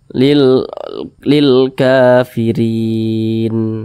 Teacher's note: Mad arid li sukun boleh dibaca 2 harokat atau kira-kira 2 ketukan hingga 6 harokat atau kira-kira 6 ketukan boleh.